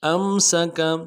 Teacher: سین کی سیٹی باریک ہوگی، باریک ادا کریں گے · حمزہ کو نون ساکن کے ساتھ ملانا ہے، نون ساکن میں اظہار کریں گے۔ حمزہ کو میم ساکن کے ساتھ ملانا ہے، میم ساکن میں غنہ کریں گے۔